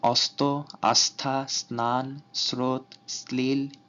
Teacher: দন্ত স এর সাথে ত, থ, দন্তন্য র অথবা ল যুক্ত হলে দন্ত স এর মতো উচ্চারিত হয়